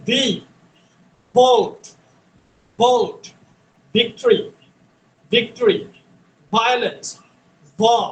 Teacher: উপরের দাঁত নিচের ঠোঁট, হ্যাঁ, দুই ঠোঁট একসাথে লাগানো যাবে না · এফ এর উচ্চারণ যেই জায়গা থেকে হয় এই ভ, ভির উচ্চারণটা একই জায়গা থেকে হয়। উপরের দাঁত নিচের ঠোঁট